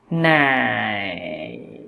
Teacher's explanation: thanh ba nó đi từ 2 xuống 1 và kết thúc ở 4